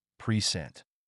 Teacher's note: a noun is stressed on the first syllable P sent but as a verb it's stressed on the second syllable